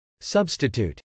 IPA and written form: sˈʌbstət.ut (substitute)